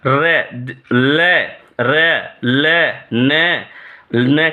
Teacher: र, ल, र, ल, न, न के बाद एक जय और स, ये होते हैं आपके कहाँ से, अब मसूड़े से बोले जाते हैं, मसूड़े को जीव स्पर्श करती है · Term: वत्सर्य